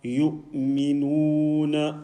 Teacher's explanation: not reading from the nose and no stretching of this short vowel